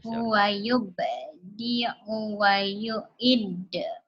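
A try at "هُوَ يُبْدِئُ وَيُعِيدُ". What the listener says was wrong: I-nya panjang. Wa yu'idu. Wa yu'idu.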